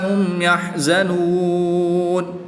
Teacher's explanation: میم ساکن میں بھی اظہار شفوی ہوگا، یہاں پر بھی اظہار شفوی ہوگا۔ وقف کی حالت میں یہاں پر مد عارض ہوگی تو اس کو 2 اڑائی الف تک کھینچ کر پڑھیں گے۔